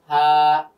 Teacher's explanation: হা, এই হার মধ্যে গলার কোনো বিষয় নেই, শুধুমাত্র হলকের সামনে থেকে আমরা আওয়াজটা খালি বের করলাম, হা, স্বাভাবিক।